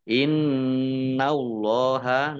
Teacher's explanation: nun tasdid, dibaca gunnah atau mendengung, ditahan 2 harokat. Allahnya dibaca tebal karena harokat di depannya fathah.